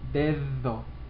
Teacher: لما الحرف بين vowels بنقول ذ مثل الحرف ذال dedo مش dedo ولا dedo ولا dedo but dedo.